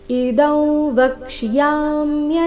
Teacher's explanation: ಅನುಸ್ವಾರದ ಉಚ್ಚಾರಣೆ ನಾಸಿಕ ರೀತಿ ಕಾರಣ ಮುಂದಿನ ಶಬ್ದ ಅವರ್ಗೀಯ ವ್ಯಂಜನ ವದೊಂದಿಗೆ ಪ್ರಾರಂಭ ಆಗ್ತಾ ಇದೆ